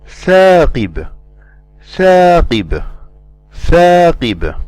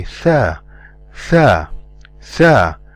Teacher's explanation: we do not elevate the back of the tongue when we pronounce the letter tha